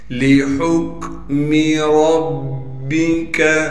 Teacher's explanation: ہا کو صاف کر کے گلے سے نکالیں گے، گلے کا وہ حصہ جو منہ کی جانب ہے اور ہا کو کاف سے ملائیں گے۔